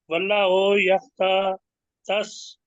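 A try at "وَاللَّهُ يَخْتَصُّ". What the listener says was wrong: واللہ کو کہیں گے تو لام کے اوپر جو کھڑی زبر ہے نا وہ نہیں بولی، واللہ،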